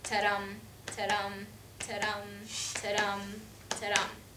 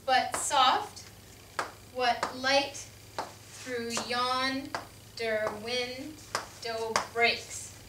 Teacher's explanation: The ta-dum sound is called an iamb, and it's made of one unstressed syllable and one stressed syllable